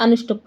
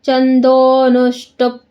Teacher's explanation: ದೋ ಆದಮೇಲೆ ಸ್ವಲ್ಪ ಎಳಿಬೇಕು, ನಮಗೆ ವೃತ್ತಸ್ವರ ಇದೆ, ಇಲ್ಲಾಂದರೆ ಅನುಷ್ಟುಪ್ ಆಗುತ್ತೆ.